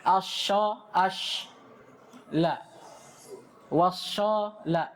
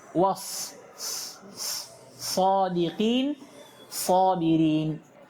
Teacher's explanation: Baca as-sabirin, was-sadiqin, wala yakhlitu as-safira bisauti asy-shin, dan jangan sampai dia mencampurkan sifat safir yang ada pada sad dengan suaranya shin